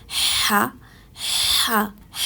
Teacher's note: ح حلق سے ادا کیا جانے والا حروف ہے. ح حلق کے درمیانی حصے سے ادا کیا جانے والا حروف ہے.